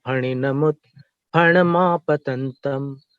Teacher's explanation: फणिन फण दोनों ओठ मिलाकर बोलना है। फ नहीं बोलना है।